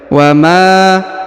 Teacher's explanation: huruf Ma dipanjangkan dua harakat karena di depannya terdapat Alif